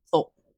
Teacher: the word thought uses an unreleased stop, thought, or a varying glottalization, while the final t in out completely resolved into a sharp glottal stop, out.